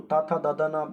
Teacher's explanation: जीभ दांतों से टकराती है, तो ये दंत व्यंजन है